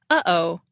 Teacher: you'll feel a tightness in your throat when you say ah that's released when you say oh uh oh that's a glottal stop we do this all the